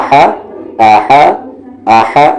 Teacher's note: سو نہ کہ سو اور نہ ہی آ یہ آ ہے آپ کا آ ہا وہی مخرج ہے جو عین کا ہے یعنی بیچ والا حلق